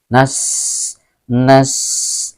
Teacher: sa ini memiliki sifat hamas atau safir. Ketika kita melafadzkannya maka disertai dengan angin keluar, ya. Nas, nas.